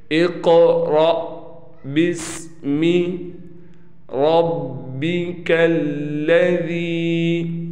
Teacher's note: تو یہاں پر دیکھیں الف پر زبر زیر پیش نہیں ہے، لہٰذا اس با کو ڈائریکٹ اس سین سے ملا کر پڑھیں گے